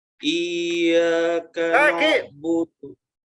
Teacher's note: Lagi, ya-nya ada tasdid itu ya. Ada tasdid, jadi dia neken huruf ya-nya. Tidak iya, tapi iya. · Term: ya tasdid